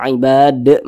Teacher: huruf Dal ini karena dia sukun dipantulkan cara bacanya karena dia termasuk pada huruf Qalqalah lihat di samping termasuk pada Qalqalah Ibad mantul seperti itu dan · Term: Qalqalah Kubro